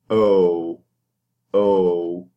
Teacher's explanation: When you say O, your lips are forward, and you can feel, with the corners of your mouth, you can feel that they are protruding and the sound is rounded.